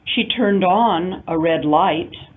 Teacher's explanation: the phrasal verb causes the stress to fall on the particle element on instead of on the verb turn